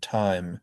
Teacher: T we've talked about that quick puff of air that's called aspiration.